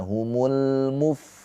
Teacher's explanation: lam takrif lam qamariah atau izhar qamariah dibaca dengan jelas lamnya